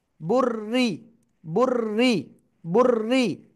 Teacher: এই র অক্ষরটা কয়বার পড়তে হবে দুইবার প্রথমবার এটার সাথে আর দ্বিতীয়বার তার নিজের সাথে ঠিক আছে তাহলে পড়বো বা র পেশ বুর বুর র জের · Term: তাসদিদ